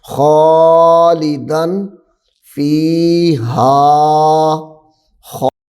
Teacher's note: یہاں پہ غنہ درمیان میں نہیں ہوگا کیونکہ دال کے بعد الف آ رہا ہے حروف حلقی، دال کے بعد الف حروف حلقی ہے تو بن جائے گا خالدن فی. یہاں پہ دن آخر میں نون ساکن کو ظاہر کرنا ہے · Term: اظہار